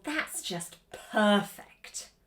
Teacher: I do want to draw your attention to sarcasm as well because this will have a falling intonation, and it's quite important to overexaggerate that falling intonation to really get that sarcasm across